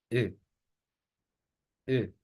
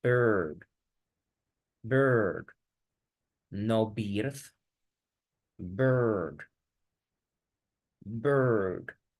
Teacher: Ahora extendamos, más bien, vamos a hacer este sonido cerrado. Voy a cerrar más mi boca, entonces va a sonar como E, E. Y luego voy a alargar ese sonido. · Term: larga y cerrada